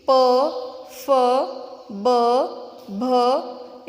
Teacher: इनका उच्चारण करते समय हमारे जो ओठ है वो एक दूसरे के साथ चिपकते हैं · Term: होठ व्यंजन